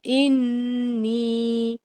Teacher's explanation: انی میں نون شدہ پر کامل غنہ ہوگا · تبتو کے با پر قلقلہ ہے اور دونوں تا کو شارٹ رکھیں گے